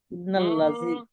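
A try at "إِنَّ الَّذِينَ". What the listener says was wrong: লামটা দুবার বলবেন তো। কবার জি ইয়া মাদ্দা টান দিতে হবে, আর নুনে তাসদিদ গুণনা করতে হবে। যতবার পড়বেন, 100 বার পড়লেও 100 বার প্রত্যেকবার গুণনা করতে হবে।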